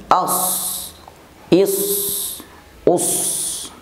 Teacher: Shad apabila diucapkan dengan makhraj yang benar, maka otomatis akan menghembuskan nafas. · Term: huruf shad